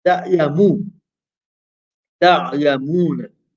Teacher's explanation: How long will you pronounce the mu for? Harakatain, 2 vowels. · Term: mad asli